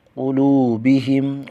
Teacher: واو ساکن کا واو مدہ ایک الف کھینچ کر پڑھیں گے